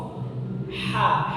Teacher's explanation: Kemudian ada aliran udara yang mengalir. Karena pita suara terbuka, aliran udara mengalir menyebabkan suaranya terdengarnya lemah. Suaranya terdengar kurang jelas di pendengaran. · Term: hamas